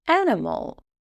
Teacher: The stress is on the first syllable, an, so we find the schwa sound in the second and third syllables as they are not stressed.